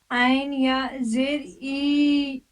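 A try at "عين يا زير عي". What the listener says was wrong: عین کو نکالنے کی کوشش کیجیے، عین یا زیر عی، عی، عین یا زیر عی، حلق پہ زور ڈالیے،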